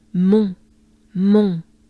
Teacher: On is basically pretty closed up, a bit nasal, right? Or maybe very nasal.